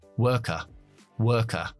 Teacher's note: Nosotros no pronunciamos las R's después de las vocales. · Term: acento británico